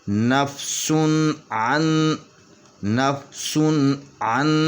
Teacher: نون ساکن یا نون تنوین کے بعد اگر حروف حلقی میں سے کوئی حروف آ جائے تو وہاں پہ اظہار ہوگا، تو اس لیے یہ یہاں پہ آواز کٹ جائے گی، سن کے اوپر آواز کٹ جائے گی، اس کے بعد عین پڑھیں گے